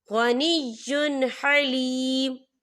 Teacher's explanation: اسے بنا غننے کے پڑھیں گے